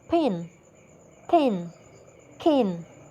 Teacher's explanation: a period during which air escapes through the vocal folds, making a sound like H. This is called aspiration. · The release phase of p, t, k is followed by an audible plosion, that is, a burst of noise. There is then, in the post-release phase, a period during which air escapes through the vocal folds, making a sound like H.